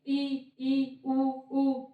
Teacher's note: जैसे हमें लगता है कि जैसे इन स्वरों का उच्चारण कर रहे हैं तो हमारा मुख क्या है, बंद हो रहा है। जैसे कि हम उच्चारण कर रहे हैं ई उ, तो ऐसा लग रहा है जैसे मुख बंद हो रहा है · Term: समृद्ध स्वर